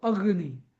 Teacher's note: Actually आपण अग्नी म्हणताना ग डबल म्हणतो अग्नी.